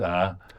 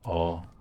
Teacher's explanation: front ah rather than a back ah